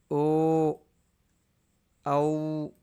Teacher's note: తర్వాత కంఠేష్ఠ్యౌ వర్ణౌ అంటే ఓష్ఠౌ ఓష్ఠ అంటే పెదాలు, కంఠ ఈ రెండింటిని ఉపయోగించి పలికేవి.